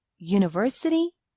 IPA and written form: ˌjuːnəˈvɜːsəti (university)